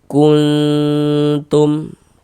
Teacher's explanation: kita samarkan bunyi nun sukunnya. Kuntum. Kuntum dipanjangkan sebentar gitu didengungkan. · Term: ikhfa hakiki aqrab